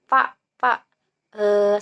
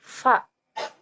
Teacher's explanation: Dia menjelaskan mengenai huruf fa, di mana huruf fa ialah ketika bantalan bibir bawah dirapatkan dengan ujung gigi